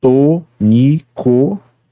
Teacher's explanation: Nós temos uma palavra constituída de 3 sílabas, tônico, em que a primeira é tônica. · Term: sílaba tônica